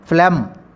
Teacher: G is a silent consonant. We never pronounce or articulate or utter the letter G in this particular word